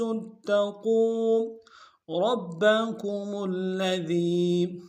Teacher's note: را کو موٹا ادا کریں گے اور با کے ساتھ ملانا ہے، با کے اوپر تشدید زور دیں گے۔